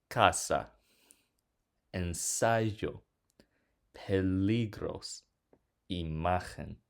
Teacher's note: Notice how in all of these words the stress fall on the second to last syllable because they end with a vowel s or n.